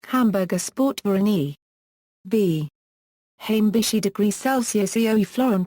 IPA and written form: hamˈbʊʁɡɐ ˌʃpɔʁt fɛɐ̯ˈʔaɪ̯n (Hamburger Sport-Verein e.V)